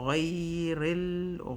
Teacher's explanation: Hold the lam sukun for 1 second.